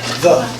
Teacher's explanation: you'll feel your vocal cords vibrate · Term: eth